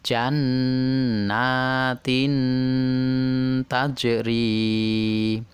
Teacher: dibaca dengung dua harokat tetapi masih mempertahankan bunyi n-nya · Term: Ikhfa